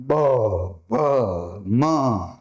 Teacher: પણ બ, ભ, મ, જો આ આંગળી ડન તો તમને ખબર પડશે કે બ, ભ, મ, તો ધ્રુજારી વધુ આવી સ્વરતંત્રીની. તો આમાં ઘોષ ઓછો રહ્યો, એટલે આ જે વર્ણ છે પહેલા બે તે અઘોષ થયા, અને આ પછીના જે ત્રણ છે એ કેવા થયા, એ ઘોષ વ્યંજન થયા.